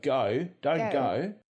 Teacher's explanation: in open syllables, it has a diphthong that moves forward in the mouth, ending in something similar to the French u. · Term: goat vowel